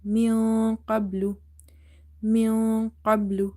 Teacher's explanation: Here in the word min qablu, after noon sakin you see the letter kaf is there. So kaf is from the ikhfa letters, we hide the noon sound.